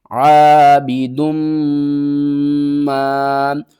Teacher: میم مشدد ہے تو یہاں پر ہم غنہ کریں گے، اور دال کو میم کے ساتھ ملا کر پڑھیں گے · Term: ادغام